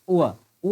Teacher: होगा वव वव जो है दंत ओष्ठ होता है ठीक है व को हम दंत ओष्ठ दांत और ओष्ठ दोनों से मेल से इसको बोला जाता है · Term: दंत्योष्ठ